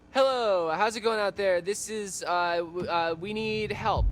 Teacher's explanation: At first his California vocal fry got on my nerves